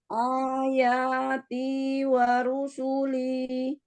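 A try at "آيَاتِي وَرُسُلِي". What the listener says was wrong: Pertama, A jangan diangkat O, tapi A itu di mana? Pangkal? Bukan, iya, di pangkal tenggorokan. A, jadi dia nggak ngangkat O, nggak gitu, tapi A biasa. Ayati wa rusuli. Sin juga nggak boleh. Nggak boleh diangkat ke atas.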